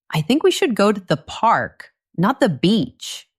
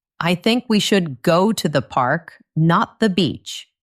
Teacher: Stressing park and beach.